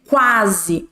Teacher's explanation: o u é uma semivogal porque a gente não escuta muito u · primeiramente, vem a semivogal, que ela não é tão forte dentro da nossa palavra ali, e depois vem a vogal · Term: ditongo crescente